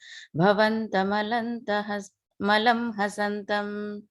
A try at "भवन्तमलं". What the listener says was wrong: I think here you ended up pausing briefly at bhavantam.